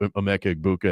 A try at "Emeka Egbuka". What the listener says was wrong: I don't think it's Egbuka. I think in fact, I went on YouTube the other day and listened to some calls, and I think the G is silent. I think it's Egbuka, Emeka Egbuka.